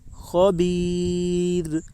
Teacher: خا کے اوپر زبر ہے، زبر کو جلدی پڑھیں، تھوڑا بھی نہ کھینچیں. یا ساکن سے پہلے زیر ہے اس لیے یا مدہ ہوگی.